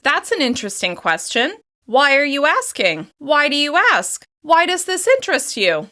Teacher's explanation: With a higher pitch and a slight rise throughout the question, you show curiosity and interest in their response.